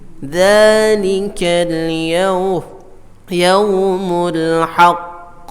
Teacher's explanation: qafnya itu dibayangkan ada dua qaf sukun, tapi karena qaf sukun itu qalqalah, maka baru dilepas baru muncul.